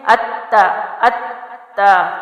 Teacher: حمزہ زبر کو جو ہے تا سے ملائیں گے، زور سختی کریں گے اور دو حروف کا ٹائم دیں گے، اتا اتا، ٹھیک ہے۔ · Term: تشدید